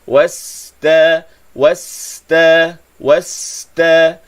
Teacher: Sin sukun ini sifatnya rakhawah. Panjangkan bunyi sin.